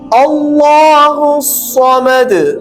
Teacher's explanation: الصمد صاد کو بھی ہم موٹا پڑھیں گے اور ہم یہاں قلقلہ کے ساتھ اختتام کریں گے آیت. اللہ الصمد.